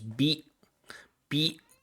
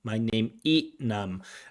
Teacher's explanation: there are many people in Vietnam in Thailand in Cambodia that just drop that final consonant